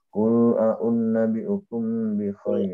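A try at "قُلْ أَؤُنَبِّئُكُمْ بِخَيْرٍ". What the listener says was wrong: A'unab di ba'nya, tasdidnya.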